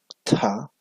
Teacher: tenemos la aspirada dental